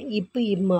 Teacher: இப்பு, இம்மு ஆகிய 2 மெய்களும் மேல் இதழும் கீழ் இதழும் பொருந்துவதால் பிறக்கின்றன